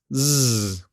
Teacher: the Z is a voiced consonant so don't forget to add your voice same as all the other fricatives the Z is a continuous